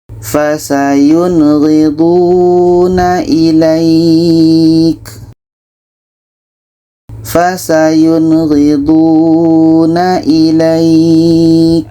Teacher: Nun jelas, ghain jelas dan tidak ada dengung. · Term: izhar halqi, izhar halki